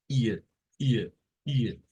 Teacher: en el inglés y es muy común en el idioma inglés se le conoce como una I corta y su sonido es una mezcla entre una I y una e